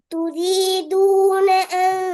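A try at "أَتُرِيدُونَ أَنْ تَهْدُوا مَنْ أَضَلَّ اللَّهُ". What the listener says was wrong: சவுண்ட வெளிப்படுத்தி வரும். நீங்க உச்சரிக்கிறீங்க, ஆனா அந்த உங்களுக்குள்ள சுருங்குது. அப்படி அல்ல, தெளிவாக வெளிப்படுத்துங்க.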